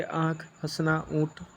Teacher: मुख और नाक दोनों से वायु निकलेंगे